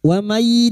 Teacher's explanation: nun sukun bertemu ya idgham biguna masuk pada huruf ya dan mendengung selama 3 harakat